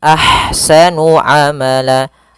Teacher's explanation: ada ha yang berharakat sukun maka dinamakan dengan ha hams. Alirkan nafasnya, kemudian baru dibaca dengan sa-nya.